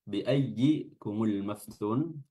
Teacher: Kumul maftun di sini ada mim sukun atau alif lam atau lam yang sukun bertemu dengan mim, namanya alif lam al-qamariyah dan lamnya dibaca jelas. Maftun di sini kita baca 4 harakat mad arid bisukun.